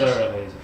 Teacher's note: You want the stress on the thar part, the emphasis.